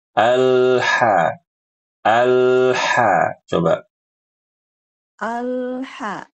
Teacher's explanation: perhatikan suara Al itu ditahan sedikit aja, jangan buru-buru, jangan kelamaan